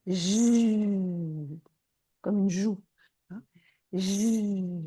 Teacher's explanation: Et si vous dites j, vous entendez d'abord un son un peu différent et surtout vous sentez dans vos doigts quelque chose qui s'est mis à vibrer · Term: son voisé